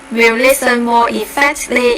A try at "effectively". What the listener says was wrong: They'll listen more effectively. So you didn't quite pronounce those last two syllables in that word.